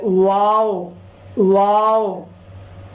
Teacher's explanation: واو کے اندر شروع سے آخر تک منہ گول ہوتا ہے